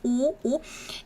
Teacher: If you got it right, this was a trick question, because this consonant iung, when it is being used as a first consonant, it does not have a sound, and it is just being used as a placeholder for this vowel over here. So this vowel had the o sound, and you can see my lips like rounded o sound. So this doesn't have a sound, and this has a sound, o.